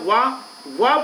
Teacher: वाह बोलते समय दांत और होठ दोनों टच हो रहे हैं। वाह देखो, वाह बोलते समय दांत और होठ दोनों टच होते हैं, इसलिए वाह को दंतोष्ठ व्यंजन कहा जाता है।